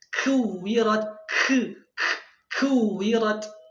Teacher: Kemudian kesalahan yang terjadi saat mengucapkan huruf kaf adalah membaca huruf kaf itu berlebihan sekali hamsnya, atau berlebihan sekali udara ketika keluar.